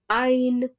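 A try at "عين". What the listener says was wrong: No, not n. Ain. As soon as the sound of noon comes in the name of the letter Ain, you must stop your sound. You must stop producing the sound. You must become silent immediately.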